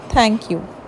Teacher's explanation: Tip of tongue is touching the back of teeth, front teeth. · Dental sounds, the tip of tongue touches the upper teeth. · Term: डेंटल साउंड्स